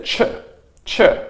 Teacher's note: So here we have a T and a Y sound. So a T and a Y together. This is pronounced as a ch, ch.